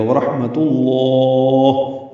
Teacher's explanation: پیش کو لام اسم جلالہ سے ملانا ہے، تا باریک ہے، لام اسم جلالہ تا کی پیش کی وجہ سے پر پڑھا جائے گا